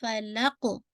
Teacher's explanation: قاف پہ آپ کی باؤنسنگ افیکٹ آنا چاہیے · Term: قلقلہ